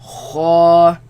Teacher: They come from the top part of the throat, right? Where the root of the tongue raises against the uvula and produce the sound.